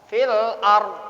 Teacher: Ya, lam komariyah berjumpa dengan alif ini masih dibaca idhar. Ar dibaca tafkhim tebal.